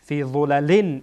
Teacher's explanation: قسمت جلوی زبان به سر دندان های پیشینی که در بالا قرار داره برخورد میکنه